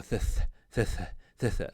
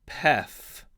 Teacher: aspirated consonants, theta, phi, chi. They're reduplicated in their unaspirated form.